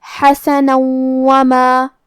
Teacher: پھر حرف الواو آتا ہے کلمت وما. یہاں حکم ہے ادغام بغنہ تو ہم یہ حکم کو غنہ اور تشدید کے ساتھ ادا کریں گے